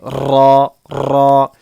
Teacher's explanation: اس کے پڑھنے میں ریپیٹیشن ہوتی ہے، تکرار ہوتی ہے